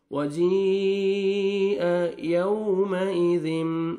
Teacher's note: वाव लीन है, नरमी से अदा करेंगे